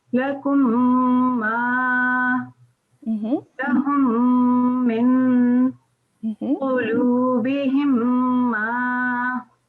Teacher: the complete assimilation of meme sakin into meme mutaharrik. And the duration is 2 counts. And the name of this type of idgham is idgham shafawi.